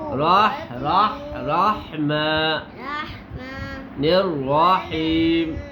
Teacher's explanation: را کو موٹا پڑھیں گے، ٹھیک ہے. الرحیم.